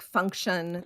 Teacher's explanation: that TION ending, that has the schwa sound in it